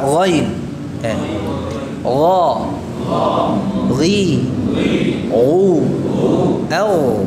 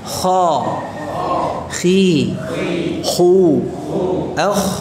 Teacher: Kalau ghain sifatnya jahr, kalau kha sifatnya hamz